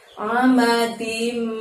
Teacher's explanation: Ada amadim pakai ain, jadi dari tenggorokan saja mengeluarkan huruf A-nya.